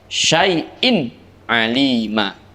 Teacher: Kebetulan di situ ada tanwin kasrah bertemu dengan ain, maka suara tanwinnya harus dibaca jelas, yaitu tidak boleh ada suara dengung, tidak boleh ada suara samar, tetapi harus jernih dibaca jelas. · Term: idhar halqi